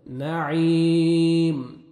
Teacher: اور یا مد ہے، 1 سیکنڈ عین کو کھینچنا بھی ہے۔ لاسٹ میں جب سٹاپ کریں گے میم ساکن ہو جائے گا، میم کو مت جزم آ جائے گی۔